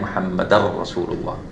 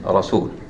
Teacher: It is as if I'm pronouncing a single letter. But this ra is more emphasized, so it has a shadda on it. It is pronounced with the shadda.